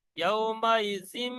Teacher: ইয়াউমাইজিন হবে না, নুন সাকিনের আওয়াজকে মিম দ্বারা পরিবর্তন হয়ে যাবে। ইয়াউমাইজিম বিজাহান্নাম, ইকলাবের কায়দা ফিট হবে, ইকলাব, খেয়াল করবেন।